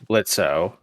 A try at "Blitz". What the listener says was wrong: Or, if you prefer Blitz, the O is silent.